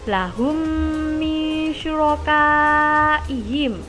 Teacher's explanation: mim sukun bertemu mim sehingga bacaannya digabung dan menghasilkan bacaan dengung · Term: idgham mislain